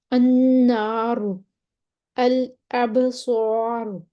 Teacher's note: را ساکن ما قبل الف آ گیا، پھر بھی موٹا پڑھیں گے